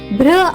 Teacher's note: బిఆర్ యొక్క శబ్దం భారా కాకుండా భ్ర అవుతుంది